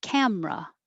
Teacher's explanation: just drop that middle e make it two syllables